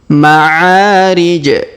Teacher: huruf ain kita panjangkan 2 harokat karena alif di depannya.